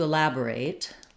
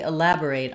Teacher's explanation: Let me elaborate on the pronunciation for you of that verb. It has second syllable stress, and the LAB, the letter A, says the A, black cat vowel. It's the same as the word lab or laboratory.